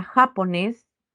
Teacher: fuerza de voz entonces ca y ya serían las sílabas átonas en el caso de la palabra japonés la sílaba tónica sería nes